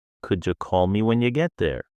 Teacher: how could you became could ye and when you became when ye? That's called connected speech, and it's essential for natural rhythm.